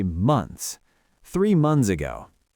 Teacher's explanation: For a word like months, a lot of native speakers don't even bother with the th sound. We just say months.